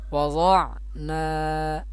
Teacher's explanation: یہ حروف مدہ میں سے الف مدہ، الف سے پہلے زبر ہو الف مدہ ہوتا ہے، اس کو بھی ایک الف کی مقدار کھینچیں گے